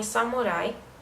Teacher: nota-se principalmente a ditongação dos hiatos do japonês, como em samurai